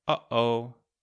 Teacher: It's the sound where you stop the air in the middle and then release it again. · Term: glottal stop